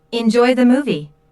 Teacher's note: notice how the intonation Rises on movie